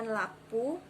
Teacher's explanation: terlihat bunyi au berubah menjadi u